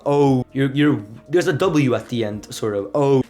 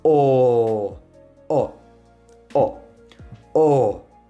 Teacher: Spanish, you literally just take the beginning of O and then you stop there.